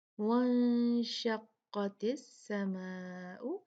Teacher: وانشقت نون ساکن ہے اس کے بعد شین ہے حروف اخفا میں سے ہے تو یہاں پر 2 کاؤنٹ غنہ ہوگا نون کا